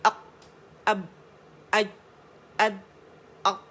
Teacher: आप मखरज पे गए, जब आप कहते हैं ना अक, तो क्या हुआ, आप मखरज को आपने टच किया, एयर प्रेशर बढ़ गया और आवाज़ सख्ती के साथ, कुव्वत के साथ ठहर गई, रुक गई। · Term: कलकला